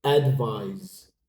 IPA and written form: ədˈvaɪz (Advise)